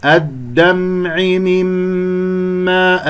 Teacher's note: الميم المشددة الغنة أكمل ما تكون